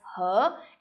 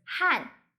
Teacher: In China it's 和 and in Taiwan is 汉, H-A-N 4 tone.